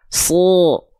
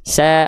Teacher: Kalau huruf shad dia tebal, so. Kalau sin agak senyum sedikit karena tipis, sa. Lalu pangkal lidahnya gak naik, makanya vokalnya ringan, vokal A dia, sa, sapi. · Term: huruf tebal